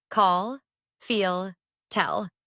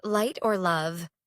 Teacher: But at the end of a word, Americans use a completely different tongue position. The dark L requires the back of the tongue to rise toward the soft palate.